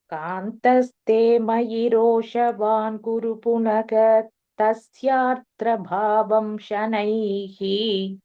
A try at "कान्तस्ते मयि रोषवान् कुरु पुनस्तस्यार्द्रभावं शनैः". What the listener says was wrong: Okay, ஒரே லைனா சொல்றேன்னா புனகாவே போட வேணாம், புனஸ்ன்னு போட்டு சேர்த்துடலாம். ரெண்டு இதுவா பிரிச்சு சொன்னேன்னா புனக தஸ்யாத்ரபாவம் ஷனைன்னு சொல்லணும். அப்புறம் அது குரு கிடையாது, குரு கே போட்டுக்கணும். காந்தஸ்தே மயி ரோஷவான் குரு புனஸ்தஸ்யாத்ரபாவம் ஷனைः.